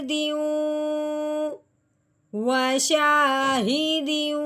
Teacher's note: अगर सिर्फ एक जेर होती तो फिर शायद हम यहाँ पे गुन्ना ना कर पाते, लेकिन यहाँ पे क्या है, दो जेर होने की वजह से, आगे मिलने की वजह से यहाँ पे क्या होगा, गुन्ना होगा